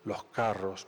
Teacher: la aspiración de S